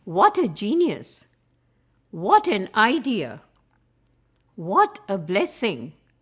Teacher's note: In order to bring out the meaning, we have to stress on the word which is the exclamatory adjective in this case, and we will say, what a genius!